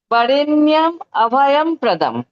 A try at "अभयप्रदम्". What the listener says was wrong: অভয়প অভয়প্রদম। অভয়ম নয়, মা অভয়প। প্র যেহেতু আছে তাই অভয়প্রদম। একটা প আসবে মা, ছোট প আসবে। অভয়প প্রদম।